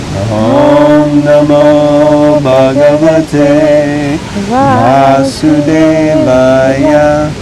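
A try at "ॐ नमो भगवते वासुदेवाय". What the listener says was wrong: Supposed to go high, not low.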